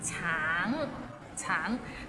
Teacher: the end has a little ng, so it's a bit of nasal sound